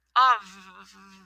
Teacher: in of, we don't say off with an F, we say of with a V, of, right?